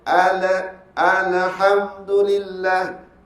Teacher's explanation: apabila dia terlampau cepat melepaskan makhraj huruf lam daripada tempat keluarnya dia akan bunyi ala ha macam mana ala pula Alhamdulillah Nampak tak bi dia Al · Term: alif lam qamariah